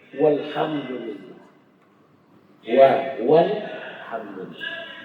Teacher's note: kalau misalnya ada fa atau waw atau summa mendahului dia, maka hamzah wasal sudah tidak dibaca.